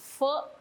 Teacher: संस्कृत मध्ये फ मिटून ओठ बंद करून म्हणतात